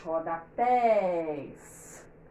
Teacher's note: a que a gente demora mais é a última, pés